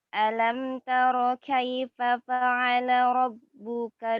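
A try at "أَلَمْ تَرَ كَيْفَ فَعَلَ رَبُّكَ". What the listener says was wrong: Panjangan rohnya atau delay.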